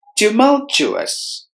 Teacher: Tumultuous, tumultuous. There are 4 syllables in this word. We have to stress the second syllable. Mul must be heard with more volume.